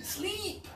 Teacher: So think about your tongue. Your tongue is very high, and only a little air is passing.